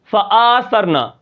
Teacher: آپ نے حمزہ کو بڑھا دیا